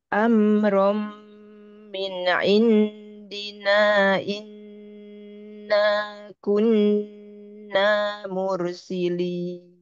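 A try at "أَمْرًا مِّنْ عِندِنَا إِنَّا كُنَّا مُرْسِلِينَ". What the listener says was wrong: Untuk nun yang pertama, Afwan, kurang panjang ya masih ya. bukan dua. Indina, indina, inna, kunna. Oh, ini bukan matopi, ada alisnya di atas ini.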